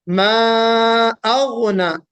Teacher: तो मा अगना में मा में मद होगा, मा अगना, गैन निकालना, यहाँ पे गाफ नहीं होना चाहिए। बाद लोग अगना पढ़ देते हैं, ये गलत है।